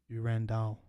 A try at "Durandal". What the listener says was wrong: That's you like split it into 3 syllables.